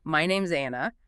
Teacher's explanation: That Z sound links the noun right into the vowel sound of the following name, Anna. It binds them together super quick, super fluid, essential for sounding conversational. · the is is almost never fully pronounced, >> right? It becomes >> it contracts to is which is pronounced as a quick Z sound. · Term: quick Zlink, quick Z link